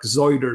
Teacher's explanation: it has the initial voicing of fricatives, which I think some English dialects in like the West Country still have it into the modern day, like zoider instead of cider and so on.